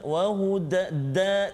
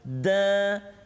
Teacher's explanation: ujung lidah kita kena pengikat gigi gusi di belakang kan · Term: huruf dal